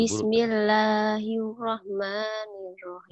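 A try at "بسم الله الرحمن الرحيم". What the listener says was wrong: Jangan hir. Emang orang barat.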